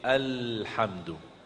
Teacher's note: Ujung lidah di depan. Dia hampir mau menyentuh gigi atas, hampir. Tapi tidak menyentuh gigi atas. ya, bagian dalam, kan gigi atas ada bagian dalam, ada bagian luar ya.